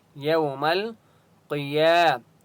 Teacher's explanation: قاف مستعلیہ میں سے اس لیے قاف کو موٹا پڑھیں گے